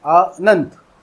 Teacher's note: न और ता दोनों एक ही सांस में एक साथ बोले जाते हैं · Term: व्यंजन गुच्छ